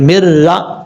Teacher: جب یہاں پر میم کو را سے کنیکٹ کریں گے تو بیچ میں نون کو چھوڑ دیں گے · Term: ادغام یرملون